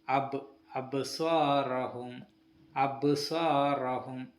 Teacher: ബ എന്ന അക്ഷരം വാക്കിന്റെ ഇടയിൽ സുക്കൂനായി വരുമ്പോൾ ശബ്ദത്തിൽ നേരിയ ഒരു തട്ടിൽ മാത്രം മതി